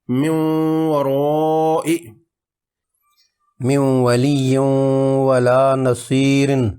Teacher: نون ساکن کا حرف واو میں ادغام، من ورائی، واو کے لیے ہونٹ گول کرنے ہیں، من ورائی، من ولی ولا نصیر، نون کی ہلکی سی آواز رہے گی